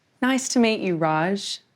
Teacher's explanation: When we use the word to in the middle of a phrase, the sound changes. Instead of an oo sound, it becomes a schwa sound, ah.